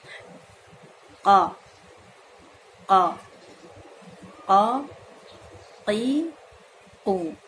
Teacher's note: Ketika mengucapkan huruf qaf, maka pangkal lidah kita dibenturkan ke langit-langit bagian yang lunak. · Qaf dibenturkan dengan sangat kuat agar isti'lanya keluar dan sifat dari syiddahnya pun keluar. Huruf qaf termasuk syiddah, ya, sifatnya yaitu tertahannya aliran suara.